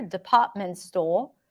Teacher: Two soft R's, department store. If I drop the R here, department store, just sounds a little bit more British.